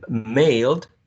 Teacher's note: Mailed is a bilabial, nasal, voiced consonant sound